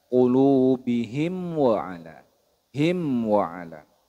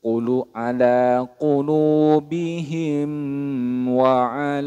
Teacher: ba maka disebut dengan izhar syafawi Apa itu izhar syafawi yaitu dibaca jelas mim sukunnya tidak boleh didengungkan tidak boleh ditahan